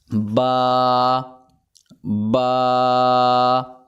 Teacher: ایک الف جتنا کھینچ کر پڑھیں گے دونوں ہونٹوں کو ملا کر